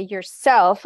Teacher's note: if I say yourself, I'm accenting self.